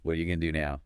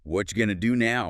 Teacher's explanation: What are you became really short, like whatcha. Right. And going to, of course, became gonna.